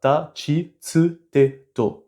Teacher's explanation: Le ti et le tu ont évolué respectivement en chi et en tsu.